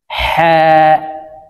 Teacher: হার মাখরাজ হলকের মধ্যখান থেকে হবে।